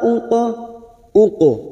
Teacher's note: qof sukun yang mati asli di tengah kalimat kita pantulkan namanya Qalqalah sugro